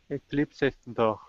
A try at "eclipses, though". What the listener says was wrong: All right, now the GH, this GH will not make a sound. So the only sound on this word at the end that you'll make is an oo, though.